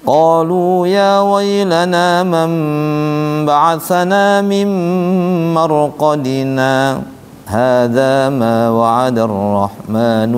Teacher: Saat dibaca wasol di marqadinanya berhenti sejenak tanpa nafas. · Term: saktah